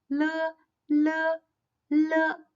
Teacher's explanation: is an alveolar lateral. The tongue tip makes a light contact with the upper alveolar ridge, but slightly more to the back than the position for nasal n. The air stream is released from the sides of the tongue.